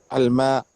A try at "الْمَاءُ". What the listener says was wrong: Pronounce the last sign also. What is the sign on Hamza at the end?